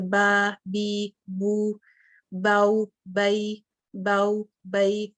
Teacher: इनको अदा करते वक्त तकरीबन उतना ही टाइम लग जाता है जैसे हम मद असली को देते हैं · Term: हरूफुल लीन